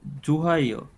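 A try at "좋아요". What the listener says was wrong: হিয়ত বলতে গেলে এখানে থাকবে না, একদমই লাইট হয়ে যাবে, বলতে পারবেন থাকবে না। জুয়ায়ো।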